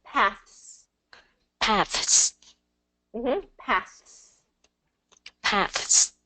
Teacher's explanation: You're going to get the TH sound in there, and then you're going to pull it quickly into the S, but the sound is going to be continuous. The airflow is going to be continuous.